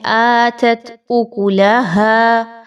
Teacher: آگے بھی آیت کے بہت ہی آسان ورڈنگ ہے، کوئی ایسا خاص ڈیفیکلٹ ورڈ نہیں ہے، بس آتت میں آپ نے خیال رکھنا ہے، اتت نہیں اس کو پڑھ دینا بلکہ حمزہ کے اوپر کھڑی حرکت ہے، تو آپ نے اس کو تھوڑا سا 1 سے 2 الف کے برابر کھینچ کر پڑھنا ہے